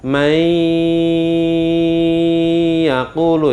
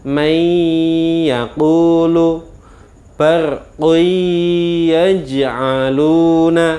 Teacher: membacanya dimasukkan kemudian didengungkan lamanya satu Alif atau dua harokat atau dua ketukan